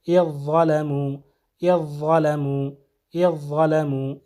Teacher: ذال کا جو ہے اثر نہیں رہے گا، بلکہ ضا کی آواز آئے گی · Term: ادغام